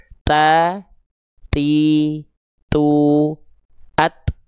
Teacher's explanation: Ketika tadi huruf ta, ujung lidahnya nempel ke pangkal gigi seri atas